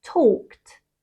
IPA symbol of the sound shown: t